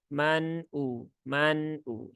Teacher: ya jangan dihentakkan di sini Man jangan ditahan begitu ya karena nun sukun itu sifatnya tawasud bukan syiddah jadi dibaca secara normal saja